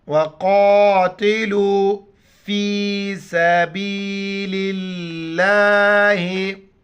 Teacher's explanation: لفظ اللہ سے پہلے لام کا جو ہے زیر ہے تو لفظ اللہ کو باریک پڑھیں گے · قوف موٹی الفاظ میں سے موٹا کر کے پڑھیں گے، لام کو واو کے ساتھ ملائیں گے، واو زبر و، قوف الف زبر قا، تا زیر تی، لام و پیش لو، فا یا زیر فی، سبیل اللہ۔